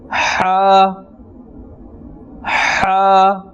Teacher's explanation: this is pronounced from the center of the throat, from the middle of the throat